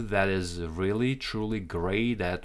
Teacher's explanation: T sounds like a d here because we're connecting it